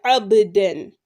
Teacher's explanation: because ba is a huruf al-qalqala, we are making the qalqala on it